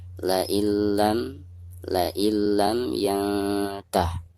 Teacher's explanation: Jadi cara membacanya harus diidghamkan, jadi suara nun sukunnya itu harus dimasukkan langsung ke huruf lam yang ada di depannya ya, disertai dengan tidak gunnah ya. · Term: idgham bila gunnah